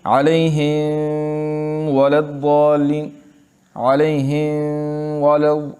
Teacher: میم کو تھوڑا سا نرمی کے ساتھ ادا کرتے ہیں، ٹھیک ہے، اس کے بعد واو کو اپنے مخرج سے ادا کرتے ہیں، یہ غلط ہے۔ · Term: اخفاء